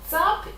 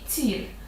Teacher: літера одна і та сама але у першому варіанті звук звичайний а у другому пом'якшений